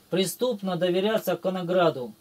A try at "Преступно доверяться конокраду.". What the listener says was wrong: Не граду, конокраду, К буква стоит.